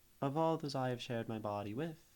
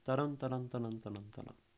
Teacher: you still get this sort of stressed, unstressed meter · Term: iambic